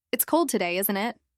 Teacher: with a falling tone. It's cold today, isn't it? I sound more certain. I'm expecting you to agree with me. I'm probably just making a comment and moving the conversation forward.